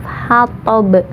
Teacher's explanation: qalqalah kubro atau pantulannya besar karena huruf qalqalahnya ada di ujung, yaitu disukunkan karena waqaf.